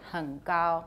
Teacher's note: It's velar, the nasal assimilated.